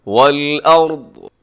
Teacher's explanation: والارض میں را موٹا پڑا جائے گا، اور آگے جو حرف ضاد ہے اسے بھی آپ نے موٹا پڑھنا ہے · جب وقف کریں گے تو ضاد کو ساکن کر دیں گے